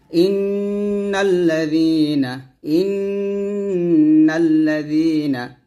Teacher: জালটা জিহ্বার আগা সামনের উপরের দুই দাঁতের আগার সঙ্গে লাগিয়ে জাল পাতলা করে উচ্চারণ করবেন